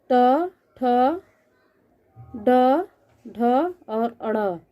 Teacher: ट वर्ग मुंह के ऊपरी सतह के स्पर्श से बोली जाती है ये ध्वनियाँ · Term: मूर्धन्य ध्वनि